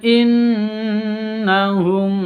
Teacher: Nun tasydid berdiri sendiri, gunnah musyaddadah, dengung 2 ketuk.